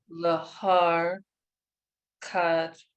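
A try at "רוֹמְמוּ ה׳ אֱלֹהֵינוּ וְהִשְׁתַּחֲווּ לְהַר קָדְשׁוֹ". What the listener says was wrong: perfect. Perfect.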